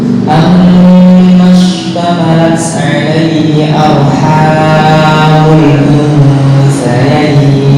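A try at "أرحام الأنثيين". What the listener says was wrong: Oke, hanya kepanjangan ya. Arhamul hanya 2 harokat.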